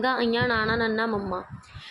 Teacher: ਠੀਕ ਹ ਨਾਸਕੀ ਵਿਅੰਜਨ ਉਹ ਹੁੰਦੇ ਨੇ ਜਿਸਦੇ ਵਿੱਚੋਂ ਜਿਹੜੀ ਆਪਣੀ ਹਵਾ ਫੇਫੜਿਆ ਵਿੱਚੋਂ ਨਿਕਲਦੀ ਹੈ ਉਹ ਨੱਕ ਦੇ ਰਸਤੇ ਤੋਂ ਬਾਹਰ ਆ ਜਾਂਦੀ ਹੈ